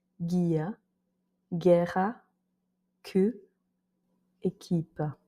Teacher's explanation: Donc c'est comme je le disais avant, par exemple avec un G ou un Q, et que après il y a les voyelles E et I, dans ces cas-là, le U ne se prononce même pas.